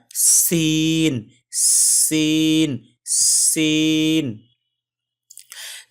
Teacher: সিন আসলে জিহ্বার মধ্যখান থেকে উচ্চারণ হবে, এবং জিহ্বার আগা সামনের দাঁতের সামনে যে 2টা দাঁত আছে তার গোড়ার সাথে লাগবে · জিহ্বার আগা সামনের 2 দাঁতের গোড়ার সাথে লাগায়া সিন, সিন, সিন।